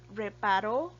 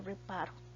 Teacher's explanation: el acento está en la última sílaba